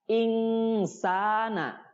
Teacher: ikhfa ini harus ditahan dulu, ya. Ditahan dulu 2 harokat untuk supaya dengungnya terdengar, ya. Jadi nun sukun itu nanti bertemu dengan huruf sa, ya. · Sa itu panjang, mad tobi'i 2 harokat.